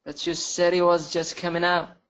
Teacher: And in the middle of a sentence, we can cancel the H.